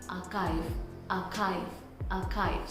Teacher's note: This ch doesn't have ch sound. It has k sound.